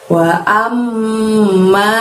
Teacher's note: Di sana tahan selama 2 harokat, ada mim tasydid atau bacaan gunnah